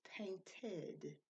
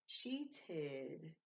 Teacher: verbs ending in T and D both have the ED ending sound and an extra syllable when it's used in the simple past